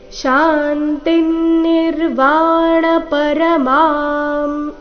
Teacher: ಇಲ್ಲಿ ಅನುಸ್ವಾರದ ಉಚ್ಚಾರಣೆ ಮ ರೀತಿ.